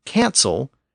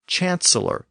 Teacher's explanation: the Normans didn't make that sound change at the beginning of words they retained the hard k sound